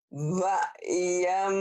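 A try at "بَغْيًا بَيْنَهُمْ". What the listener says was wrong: Bukan bayam. Bakwan nanti jadinya. Ini G. Bag. Kalau kan bahasa Inggrisnya tas bag. Bagyam bainahum.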